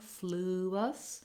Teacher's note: sure that we have that l sound in there flew us we have our tense ooh sound again and our relaxed schwa in the last syllable